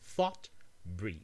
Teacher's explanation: For example, in thought, your tongue is jammed in between your teeth and then producing a stream of air. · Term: dental or interdental